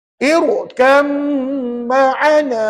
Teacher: Masukkan ba ke dalam mim sabdu dan dengung. 2 harakat. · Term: idgham kamil